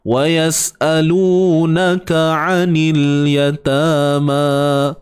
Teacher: Wa yas'alunaka, kaf baris atas ka satu harakat saja, ain baris atas a satu harakat sahaja. Sempitkan di bahagian tengah kerongkong kita